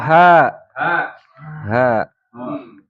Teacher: Makhrajul hurufnya di pangkal tenggorokan.